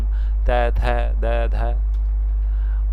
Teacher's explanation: जिह्वा ऊपर के दांतों में लगती है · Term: दंत्य